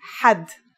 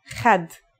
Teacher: It's also similar to the sound people make when they snore. According to phonetic charts, Ha is pronounced in a deeper part of the throat than Kha.